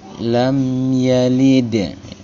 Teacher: mim sukunnya dibaca dengan izhar atau jelas, huruf M-nya dibaca dengan jelas sekali. Lam yalid, dal sukun, salah satu huruf qalqalah, namanya qalqalah sugra, sukunnya sukun asli dan berada di tengah-tengah bacaan atau kalimat, maka dipantulkan dengan suara yang agak kecil pantulannya. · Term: izhar syafawi